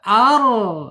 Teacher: inhirab itu ditarik lidah kita ketika bergetar ditarik ke belakang ya. Ketika bergetar ar gitu ditarik.